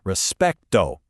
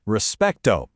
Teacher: For respeto, you want to hit that middle syllable hard.